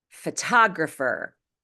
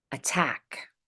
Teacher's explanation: Photographer follows the exception rule. When T is at the beginning of the strongest syllable, it's pronounced as a true T, regardless of whether or not it's between vowels.